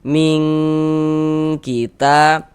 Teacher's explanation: di bagian ming itu suaranya itu kita tahan, nah, kita panjangkan sejenak, kira-kira sepanjang 2 harokat, kita dengungkan, kita gunahkan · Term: ikhfa hakiki